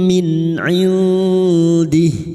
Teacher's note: nun sukun bertemu ain izhar halq nun sukun dibaca jelas tanpa mendengung bertemunya nun sukun atau tanwin dengan salah satu dari huruf enam ini termasuk huruf Huruf ain maka bunyi nun sukun dibaca jelas tanpa mendengung. · masuk pada huruf mim dan mendengung selama tiga harakat · Bi'adzabim kasar tanwin bertemu mim idgham biguna masuk dengan mendengung masuk pada huruf mim dan mendengung selama 3 harokat. Bim min 'indih. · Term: idgam biguna